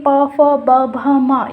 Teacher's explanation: हमारे होठों आपस में स्पर्श हो रहे हैं, इसलिए इन व्यंजनों को बोला जाता है ओष्ठ व्यंजन।